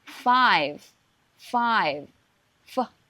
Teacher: you have to use your upper teeth to touch your lower lip. Actually, it's similar to English F sound.